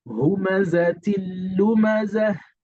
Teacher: But when you have a letter that's having a fathatani or a kasratani or a damatani that comes before any letter lam and ra, so the tanween or the nonation sound is going to be dropped. It's going to be dropped in place of the shaddah. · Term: idgham naqis